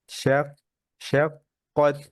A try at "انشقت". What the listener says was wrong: এই তায়ের হামস শোনা যায় না কেন? ফাহাসাহু শাখসুন সাকাত, এই যে তা আছে।